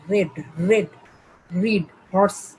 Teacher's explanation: আর সাউন্ডটা কেঁপে কেঁপে হয়, এই জন্য আর হচ্ছে ট্রিল সাউন্ড।